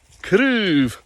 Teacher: it's probably one of the hardest Gaelic vowels to acquire consistently. And it's the back vowel that's closed. And you have to kind of channel the Joker when you're saying it.